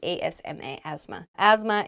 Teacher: Asthma is spelled very weirdly. There's a TH in there, but we do not say the TH. It sounds like ASMA, asthma.